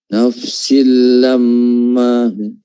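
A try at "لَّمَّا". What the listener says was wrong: Ya, di mimnya panjang. Mim tasydidnya yang panjang. Maknanya di sini 2 harakat saja ya.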